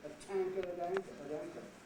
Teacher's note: So a tanker at anchor, notice when I say tanker, aspirate the tea, at anchor, when the T belonged to the previous word, the at, I didn't aspirate